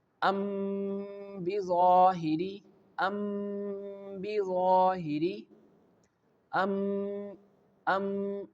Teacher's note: Here this letter mim, which has sukun on it, giving a nasal vibration at the lips.